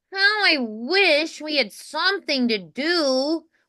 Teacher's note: a tiny bit of nasality, like how I wish we had something to do, where it's a little more forward. I think the brightness will contrast with your natural warm tone a little bit more, so it'll make it stand out a little bit more.